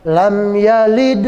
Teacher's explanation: yang ada di tengah kalimat begitu namanya qalqalah sughra. Dia qalqalah tapi ringan.